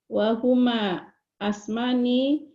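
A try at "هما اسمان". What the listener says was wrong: Ismani bukan asmani, huma ismani.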